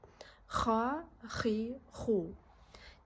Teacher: Енді бұл ха, ауыз қуысынан өте қырыл дыбысы шығу арқылы дыбысталады.